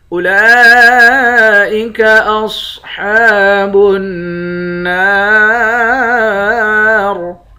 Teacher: اولئک اصحاب النار، لام کے اوپر کھڑا زبر ہے، کھڑے زبر کے اوپر مد ہے، اس مد کو پانچ الف کے برابر کھینچ کر پڑھتے ہیں۔ صاد کو موٹا پڑھیں گے، ہا کے اوپر کھڑا زبر ہے، اس کو بھی ایک الف کے برابر کھینچیں گے، نون مشدد پر غنہ کریں گے، نون کے بعد الف ہے، الف حروف مدہ ہے، ایک الف کے برابر کھینچ کر پڑھتے ہیں، آخر میں را ساکن ہے۔